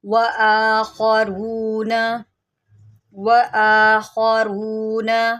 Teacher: خوا کو موٹا کریں، حروف مستعلیہ میں سے ہے